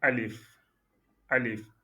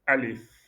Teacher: Il y a la langue qui touche un peu le palais et ça revient très vite.